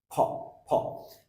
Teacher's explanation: ফ মূলত এই সাউন্ডটাকে আমরা বলতাম প সাউন্ড, কিন্তু এটার উচ্চারণ প হচ্ছে না, সাউন্ড হবে ফ। দুই ঠোঁট শক্ত করে লেগে একটা বাতাস বের হয়ে আসবে হালকা